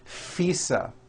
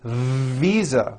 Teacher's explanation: I said fisa with an unvoiced F I should have said visa with a voiced v